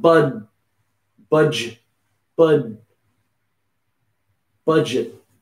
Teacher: the D is almost silent, but it's making a little sound.